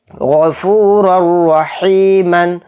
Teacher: تنوین کے بعد را آ رہا ہے تو اس میں ادغام بلا غنہ کا قاعدہ ہو رہا ہے اور اس میں ہم غنہ نہیں کریں گے، اس را کو را کے ساتھ ایک دم ملائیں گے. غفورالرحیمن، را کو موٹا پڑھیں گے کیونکہ دونوں را کے اوپر زبر ہیں، ایک پر دو زبر ہیں دوسرے پر ایک زبر ہے، تو ان دونوں کو موٹا یعنی پر پڑھیں گے.